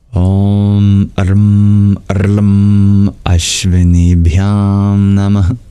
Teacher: The O and the L and the A, they're longer than other vowels.